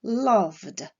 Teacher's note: Le verbe love se terminant par un son sonore, la terminaison ed se prononcera d